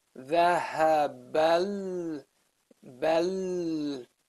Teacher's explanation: So then you say, Dhahabal, bal, the lam after it. You jump from the ba to the lam right away. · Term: Hamzatul Wasl